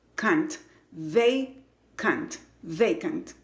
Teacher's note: La segunda parte se pronuncia con el sonido schwa, cant, vacant, vacant.